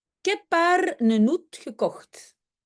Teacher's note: Et donc le heb, le haar et le hoed, prononcé sans H.